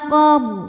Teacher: Ra sukun dibaca secara tafkhim sebab huruf sebelumnya berbaris fathah, maka ra dibunyikan dengan tebal.